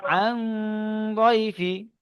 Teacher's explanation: নুন সাকিনের আওয়াজকে নাকে তুলে একালি পরিমাণ গুণনার সহিত পড়তে হবে।